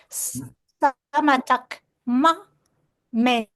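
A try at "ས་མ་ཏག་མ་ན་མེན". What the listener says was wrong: You read na also, okay? Sa, sa ma tak ma na men. Just like that. You just need to little bit slow down.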